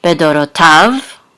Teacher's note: this is an etnachta, so the accent is on the last syllable